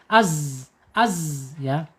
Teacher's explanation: Tetapi secara sifat ya, ini beda. Zai sifatnya ada di al-jahr ya. Al-jahr itu mengalir tertahannya napas.